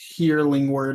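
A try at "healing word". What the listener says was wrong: sounded like you said hearing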